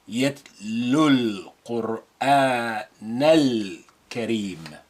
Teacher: We retain the sukun al lam, and note how we ignore the pronunciation of alif because it's not at the beginning, and the sukun is linked directly to the first available vowel before it, and that's lu.